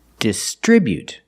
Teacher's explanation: First, let's look at the verb distribute. We put the stress on the second syllable.